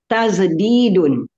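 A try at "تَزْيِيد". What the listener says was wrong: Kenapa tazdidun? Kan, itu alifnya dari ya, Ibu. Tazyidun.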